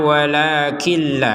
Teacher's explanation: Nun bersukun masuk langsung ke lam. Nun bersukun langsung masuk ke lam.